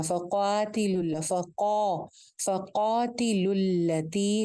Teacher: قاف موٹا ہے تو اس کے ساتھ کی کھڑی زبر جس کو ہم ایک الف لمبا کریں وہ بھی موٹی رکھتی ہیں